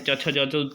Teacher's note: तालू से बोला जाता है च छ ज तो बोला ही जाता है साथ ही साथ य